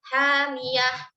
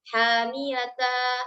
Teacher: walaupun misalnya harokatnya itu fathatain dan kita wakaf di situ, dia tidak dibaca sebagai mad iwad, tapi diganti dengan bunyi ha.